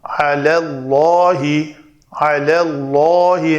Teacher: اللہ اسم جلالہ کا لام ماقبل زبر ہے تو اس لام کو پر پڑھنا ہے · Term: پر لام